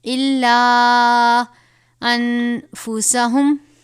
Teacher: نون ساکن کے بعد حروف اخفاء میں سے فا آیا ہے تو یہاں پر ہم غنہ کریں گے